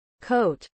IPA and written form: koʊt (coat)